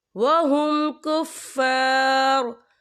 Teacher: वफ की सूरत में रॉ जो है साकिन हो जाएगा।